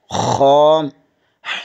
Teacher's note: حلق کے اوپر والے حصے سے ادا ہوتا ہے